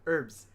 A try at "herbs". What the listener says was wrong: You really enunciate the H when you say herbs? Herbs. Herbs.